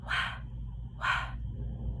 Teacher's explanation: my throat doesn't vibrate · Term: W-H